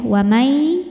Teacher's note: ada hukum idamunah karena ada nun mati menghadapi huruf ya maka Nun dimasukkan Keya Ya wamai sambil kita tahan kita dengungkan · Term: idgham bi gunnah